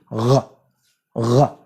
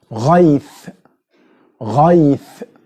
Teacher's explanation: It's from the same place of producing ayn but you touch with your velum. You touch this back organs touch each other. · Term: ghayn